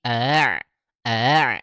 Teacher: hamzah yang keduanya itu bukan dibaca dengan tahqiq, melainkan dengan tashil